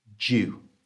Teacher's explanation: The word due, although it's spelt with a D at the start, is actually pronounced with the J sound.